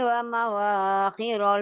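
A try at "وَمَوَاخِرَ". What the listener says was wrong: Mana ada wawunya? Wa mawa nggak ada wawunya. Wa taral fulka fihi mawa. Enggak ada wa mawa.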